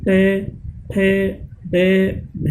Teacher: इस प्रकार की ध्वनियां जिनका उच्चारण करते समय जीभ का अग्रभाग मसूड़ों को स्पर्श करता है। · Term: मूर्धन्य